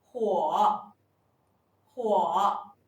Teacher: The initial consonant is 'h' The final is 'uo' The tone is the third tone